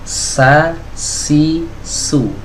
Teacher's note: Jadi kalau kita letakkan tangan kita, telapak tangan kita ini di depan mulut kita, itu kita rasakan ada semburan udara atau dorongan udara atau nafas yang mengenai telapak tangan kita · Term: sifat hams